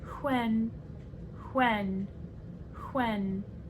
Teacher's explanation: then we have the unvoiced wh as in when